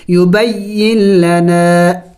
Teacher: ہیں، اس یا کو لام کے ساتھ ملائیں گے، یبین لنا، نون کو نہیں پڑھیں گے